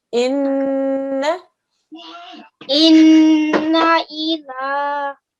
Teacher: This noon carries a fatha, just 1 second. The 2 seconds is going to be spent on the n sound, okay, for the noon. But then when we do the na, it's just for 1 second